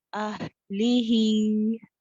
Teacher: ہا ساکنہ میں پورا ٹائم دے رخاوہ کا